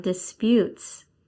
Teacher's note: Ah, yes, on the last one, disputes. Yes, it's on the last syllable.